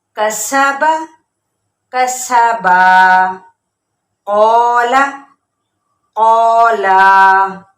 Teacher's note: اس کو ایک الف یا پھر دو حرکات کے برابر کھینچیں گے